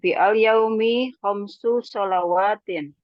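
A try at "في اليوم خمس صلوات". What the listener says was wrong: Baik, jayyid.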